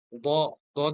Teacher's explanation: দ দ যখন উচ্চারণটা হবে তখন একটু মুখটা গোল হয়ে যাবে, তবে এখানে ধাক্কা হবে না।